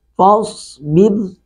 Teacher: فاصبر، صاد کو پر کرے کے پڑھیں گے، فاصبر، را کو باریک پڑھیں گے، اس سے پہلے زیر ہے